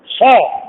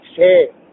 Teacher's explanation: ضاق الحيز صاد. زاد الحيز سين.